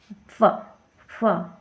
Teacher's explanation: ठीक है, फ, फ मतलब दोनों दोनों ओठों का प्रयोग होता है ऐसे बोलने के लिए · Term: ओष्ठ ध्वनि